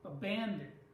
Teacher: In the word abandon, the second syllable is stressed.